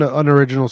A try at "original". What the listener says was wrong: You mean original? You said unor original.